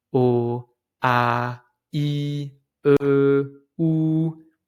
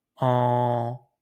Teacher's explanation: But when I pronounce on, obviously I can feel a small vibration because the air comes from my nose as well as my mouth. · So we call them nose vowels because when you pronounce these vowels, the sound comes at the same time from your mouth and from your nose. Actually, the air comes at the same time from the mouth and the nose.